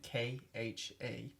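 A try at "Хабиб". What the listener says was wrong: Habib. Habib It took me a while to learn it, but it's Habib. It's not Khabib.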